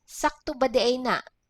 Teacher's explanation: there is a glottal stop at the vowel A